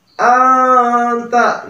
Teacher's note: itu ikhfa, ya, nun mati bertemu dengan ta